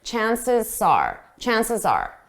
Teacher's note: So when you hear it at a fast pace, you just hear the S from chances and you hear it both on chances and are.